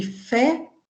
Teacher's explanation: P e F são consoantes produzidas diferentemente em português, P com lábio inferior e lábio superior, fechamento total da passagem da corrente de ar e liberação abrupta desse ar. F produzido com lábio inferior, dentes incisivos superiores, e a liberação contínua do ar, como se fosse um ventinho, né?